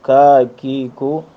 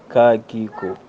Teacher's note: لحات انتہائیہ سے جو حرف ادا ہوتا ہے اس کا نام ہے کاف مد کے ساتھ